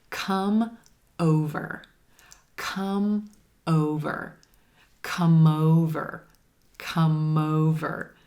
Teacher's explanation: Listen to how that M, that consonant, links over in front of the vowel, in front of the next word, and keeps that voice flowing from word to word.